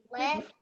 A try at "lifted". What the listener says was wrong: And then it's got the ED on the end, so lifted.